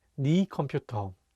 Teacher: Even though it's written as 내 컴퓨터, most people pronounce it as 네 컴퓨터.